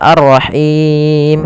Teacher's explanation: Ha dari pangkal, dari tengah tenggorokan kita. Kemudian pada lafal Him ada mad arid disukun. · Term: ha kecil